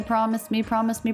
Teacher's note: not a lot of Melody pretty flat mostly an unstressed feeling